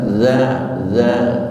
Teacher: Ujung lidah hampir nempel dengan gigi atas. Dza dza suaranya remuk tapi tidak pecah. Jangan dibaca jalika.